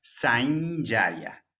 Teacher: Entonces voy a utilizar la nasal palatal, la ñ.